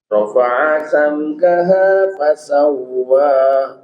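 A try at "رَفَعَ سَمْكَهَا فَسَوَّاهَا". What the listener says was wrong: Huruf wawu tasdid nggak boleh ditempo. Nggak boleh ya. Yang hanya boleh ditempo itu hanya nun dan mim. Ya, selainnya itu nggak ada yang boleh ditempo.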